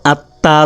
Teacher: তার পূর্বের হরফের হরকতের সঙ্গে একবার উচ্চারিত হয় এবং নিজ হরফের হরকতের সঙ্গে একবার উচ্চারিত হয় প্রথমবার উচ্চারিত হওয়ার সময় একটু থেমে যাবে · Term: তাসদিদ